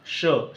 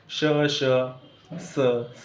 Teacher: तोंडातली हवा जी आहे ती कुठेतरी दातांच्या मधून घासून गेलेली असते श स मध्ये सुद्धा काय होतं हवा घासलेली आपल्याला जाणवते म्हणून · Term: घर्षक